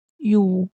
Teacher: Okey, selain daripada tu kita tidak boleh muncung. Okey, di sini kita muncung sebab ya tu berbaris dhammah